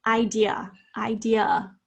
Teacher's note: we pretty much all say the schwa it's in the third syllable